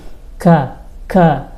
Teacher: kalau ka itu agak naik dikit ya masih di bagian belakang lidah tapi agak maju dikit ka qo ka yang atas qul yang ini kul beda tuh ya jadi kita harus belajar lagi ya dan hati-hati pas baca Quran pada huruf-huruf yang mirip pembacaannya atau ee bunyinya.